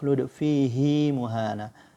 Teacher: dibaca panjang dua harakat huruf H kasrah